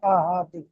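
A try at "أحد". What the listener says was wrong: আহাদ, এই যে হা রহা, আহাদ। আহাদ হলে ছোট হয়ে যাচ্ছে আহাদ।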